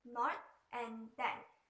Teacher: Pakistani speakers also use dental stops instead of dental fricative, especially for the phoneme T and D. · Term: dentalization